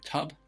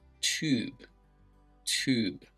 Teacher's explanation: just notice the difference there typically how long you would say those two different versions of the same vowel